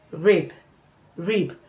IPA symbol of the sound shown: ɹɪb